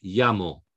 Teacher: have to stress the accent on the next to last syllable not the last the next to the last syllable · the stress is on the next last syllable